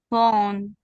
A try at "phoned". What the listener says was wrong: I want to hear the end. Phoned. Phoned. yeah, just a little soft d sound at the end. Phoned. Like that.